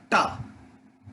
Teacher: टा में जो जीभ है, ठीक है, ये थोड़ा सा ऊपर चली जाती है, ऊपर जाकर के पीछे मुड़ जाती है, ऐसे जाकर के ऐसे मुड़ जाती है।